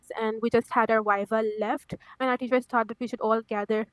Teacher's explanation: missing the th a little bit. Our teachers taught instead of thought.